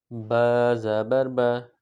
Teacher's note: با جو ہے جب دونوں ہونٹ ملتے ہیں، یعنی ہونٹوں کے بھی 2 حصے ہیں، ہونٹوں کے تری والے حصے جب آپس میں ملے تو اس سے با ادا ہوتا ہے، اور جب ہونٹوں کے خشکی والے حصے آپس میں ملتے ہیں تو اس سے میم ادا ہوتا ہے۔